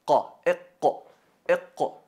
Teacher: elevando el fondo de la lengua hacia la parte del velo paladar · La parte del fondo, ahí donde sale la letra qaf, qa, iqqa, iqqa, iqra bismi rabbika alladhi khalaq, iqra bismi rabbika alladhi khalaq, empieza desde la entrada de la lengua, el fondo de la lengua tocándolo con la parte superior blanda al paladar